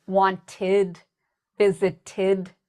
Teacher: So some past tense words like wanted, visited, they have this id sound.